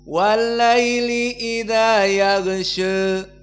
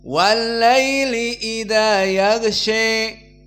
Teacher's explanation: Maka waras An-Nafi' dan Abu Amr dibaca dengan at-taqlil, makna taqlil imalah sughra. Maka dibaca walaili idza yaghsha. Adapun Al-Kisa'i dengan al-imalah al-kubra walaili idza yaghsha.